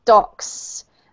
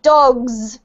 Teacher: this is a clear S, docks, and the dogs has a Z sound